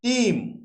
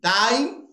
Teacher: তাহলে ই ছিল মনোথং, হয়ে গেল আই। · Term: গ্রেট ভাওয়েল শিফটের